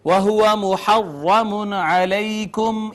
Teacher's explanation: نون تنوین کے بعد عین، لہٰذا یہاں پہ اظہار ہوگا